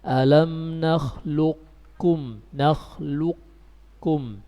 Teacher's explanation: idgham naqis, dengan menyisahkan sifat isti'la pada qaf, kita membacanya alam nakhluqkum, nakhluqkum.